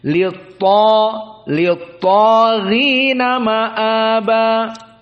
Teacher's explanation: Maka ta mufakhamah lit-ta dan gha mufakhamah ghina lit-taghina